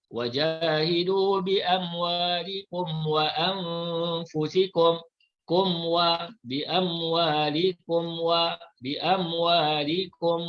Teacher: Cara bacaan izhar syafawi. Mim mati dibaca secara jelas tanpa dengung.